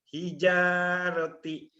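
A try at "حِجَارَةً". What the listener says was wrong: Hijarota. Bukan hijaroti. Barisnya di atas.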